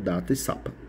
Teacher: o articulador ativo é ou o ápice ou a lâmina da língua e com articulador passivo temos os dentes incisivos superiores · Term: dental, Dental